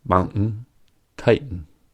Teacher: instead of pronouncing the ‘T’ in “mountain” and “titan,” they will use [ʔ] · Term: glottal stop